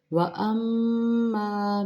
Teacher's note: میم مشدد پہ غنہ کریں گے، میم زبر الف ماں مقدار پوری کریں گے، من اظہار کریں گے کیونکہ آگے حمزہ حروف حلقی ہے۔